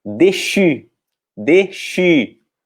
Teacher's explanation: o E com acento agudo tem o som de E fechado, e o U tem o som de I com bico. A pronúncia vai ser déchu, déchu.